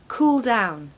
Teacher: If you find this difficult, just say the word cool and then down. So make sure you stress the first word, cool down.